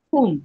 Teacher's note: Huruf kaf tu biar ada udara sikit. Kum, bukan kum, bukan huruf K dia ada udara.